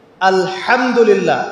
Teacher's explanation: হা এর মাখরাজ কোথায় বলেন একজন? কণ্ঠনালীর মাঝখান থেকে। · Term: হায়ে হুত্তি